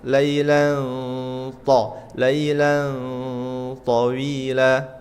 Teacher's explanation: Ini fathatain ketemu th itu ikhfa. Dan sedikit masuk ke makhraj huruf tha.